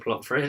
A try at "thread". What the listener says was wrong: No, not Fred. Is it TH? Fred. Like you're threading a needle.